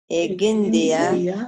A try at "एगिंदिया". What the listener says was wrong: इंडिया इंडिया नहीं है, क नहीं है, ग है। एगिंदिया